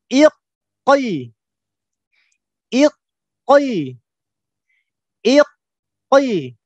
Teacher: Jadi kita pastikan makhraj qaf ini betul-betul menempel ya. Jadi bagian lidah bagian belakang menempel dengan langit-langit bagian belakang yang berupa daging.